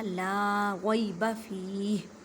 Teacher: فی کو ایک الف کی مقدار میں کھینچ کر پڑھیں گے کیونکہ یا مدہ کا قاعدہ ہو رہا ہے۔ ہا کو ساکن کریں مینس کہ سائلنٹ کر دیں کیونکہ آگے وقف ہے۔